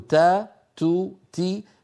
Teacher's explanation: فيها شيء من الهمس لطيف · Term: همس التاء